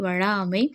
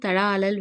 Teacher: ஸோ அதுதான் இப்பாடலில் இடம்பெற்ற வளா அமை தலா அலல் எல்லாம் லா என்னும் எழுத்தை 3 மாத்திரை அளவு நீட்டி ஒலிக்க வேண்டும். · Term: உயிரளபடை